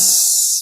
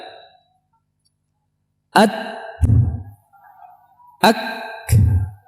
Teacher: Terdengar tapi samar karena dia hanya udara. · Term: hamas